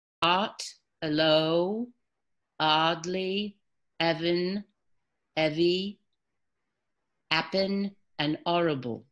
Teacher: you're gonna lose the h